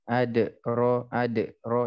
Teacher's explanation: Qalqalah, ketika di tengah jangan ditahan.